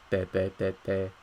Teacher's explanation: it's gonna sound a little bit like a D, te, te, te, te, but it's not a D. because your vocal cords don't vibrate either.